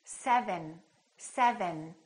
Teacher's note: my tongue is touching right behind my upper teeth